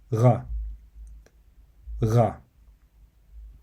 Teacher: position the end of your tongue to the back of your mouth, like you would when pronouncing the letter G in the English word go. However, you would need to leave enough space between the back end of your tongue and the end of the mouth to allow air to flow out from your throat, giving it the R sound. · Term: ghayn